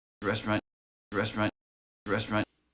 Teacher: you might hear this as three syllables but most native speakers will make it to rest run